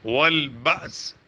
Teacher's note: با کے ساتھ الف پر جزم آ گیا تو حمزہ بن گیا، حمزہ جھٹکے سے